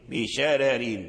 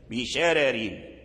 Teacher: أن هذه الكلمة لا تخضع للقاعدة السابقة فورش يقرأها بالترقيق بشرار، يميل الراء لأن الترقيق نوع أو ضرب من أنواع الإمالة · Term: ترقيق الراء